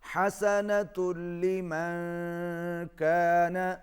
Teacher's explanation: نون ساکن کے بعد کاف ہے، اخفا ہوگا، آواز ناک میں جائے گی